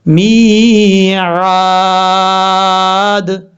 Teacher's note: اب اس کے بعد میم کے بعد یا ہے، میم یا زر می، میم کے بعد جو یا ہے یہ یا مدہ ہے، ایک الف کی مقدار اس کو لمبا کر کے پڑھا جائے گا، می۔ عین کے آگے الف ہے، اس کو ایک الف کی مقدار لمبا کریں گے، یہ الف مدہ ہے، میعاد۔ اب جہاں پر جب وقف کریں گے تو وقف کرنے میں دال ساکن ہو جائے گا، اور جب دال ساکن ہوگا تو دال میں قلقلہ بھی ہوگا۔